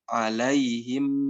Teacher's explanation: Kalau mim biasanya kita baca alaihim ditutup, alaihim ditutup sempurna. Nah, ketika ikhfa ini, bibir kita tidak ditutup sempurna.